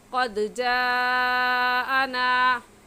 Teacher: اس مد کو 4 الف کے برابر کھینچ کر پڑھیں گے، نہ اس سے کم اور نہ ہی اس سے زیادہ